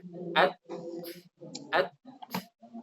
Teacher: At, baru ada hamsnya. At, awalnya tertutup, lalu muncullah hams seperti itu